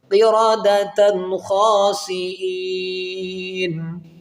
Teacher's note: دو زبر کی تنوین کے بعد حروف حلقی میں خا ہے، تو یہاں پر اظہار کیا جائے گا، غنہ نہیں کیا جائے گا